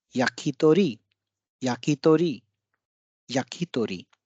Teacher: दूसरे, तीसरे और चौथे ध्वनि पर बल ज्यादा है